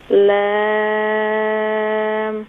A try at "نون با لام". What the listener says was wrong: اچھا, با میں تھوڑی سی جلدی کیا آپ نے. نون با لام.